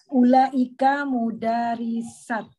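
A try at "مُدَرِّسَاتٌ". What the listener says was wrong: Mudarisatun. Pakai roknya pakai tasdid. Bukan Ya, mudarisatun.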